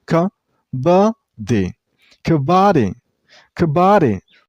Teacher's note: The first syllable is pronounced very shortly. · you should stress on the middle syllable. I mean on ba sound. Kabaddi. The per syllable is pronounced very shortly.